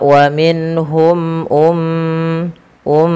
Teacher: tahan suara m ya karena ia mim berharakat tasydid dan kita hukumi dengan bacaan ghunah